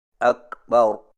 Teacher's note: کاف اردو کے لفظ کھا کی مثل سنائی نہ دے، اور نہ ہی اس کی ادائیگی میں ہا اور حمزہ کی آواز پیدا ہو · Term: کاف ساکنہ